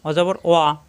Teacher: দুই ঠোট থেকে উচ্চারণ কিন্তু দুই ঠোট মিলবে না অজবর ওয়া জিম জবর জাল জবর দা ওয়াজাদা অজাদা হারকতের উচ্চারণ